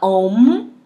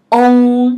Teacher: Não fala om, não fecha a boca, tá? É on, on, on, on. A língua é embaixo, né? Som nasal.